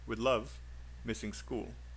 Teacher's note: maybe missing is unstressed